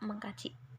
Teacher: fonem k pada kata dasar kaji tidak luluh apabila diberi awalan afiks mah dan dibakukan menjadi kata mengkaji demikian